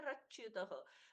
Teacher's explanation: विसर्ग का हो गया यहां पर रेप। यानी कि आधा र।